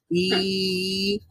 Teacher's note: জিহ্বার গোড়া মানে জিহ্বার মধ্যভাগ এবং উপরের প্যালাটের মধ্যবর্তী জায়গা থেকে প্রডিউস হবে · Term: ইয়ায়ে মাদ্দা